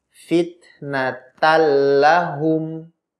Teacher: Asalnya fitnatan, ada gunnahnya, tetapi kemudian nunnya sukun dan di depannya ada lam berharokat, maka diidghamkan. Nun masuk ke dalam huruf lam menjadi satu huruf yaitu huruf lam tanpa gunnah.